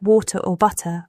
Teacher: In American English, the T in words like water or butter often sounds like a soft D. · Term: T flapping